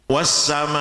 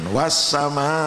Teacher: Bacaannya panjang 5 harokat, berarti 5 hitungan. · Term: mat wajib muttasil